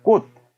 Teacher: 이 치읓이 음절 끝소리 규칙에 의해서 우리는 발음할 때 디귿으로 바꿔 발음합니다.